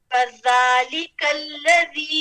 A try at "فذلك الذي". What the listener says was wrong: دیکھیں اب حرف الذال میں صرف زبر ہے ٹھیک ہے زبر مشدد نہیں ہے شدہ نہیں ہے جب حرف کے اوپر شدہ ہوگا پھر کیا ہوگا اس حرف کا یعنی دو میرے پاس کتنے ہیں دو ذال ہیں ایک ذال لکھی گئی ہے اور